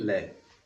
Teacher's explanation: पार्श्विक व्यंजन की अगर हम बात करें तो ऐसा ऐसा वर्ण जिसका उच्चारण करते समय जिव्वा का अग्र भाग मसूड़ों के पास पहुंचता है और हवा है जो वह पार्श्व से निकल जाती है।